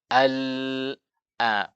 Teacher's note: Kita membaca lam, al, ujung lidah kita rapat ke langit-langit. Al, suara dari mana?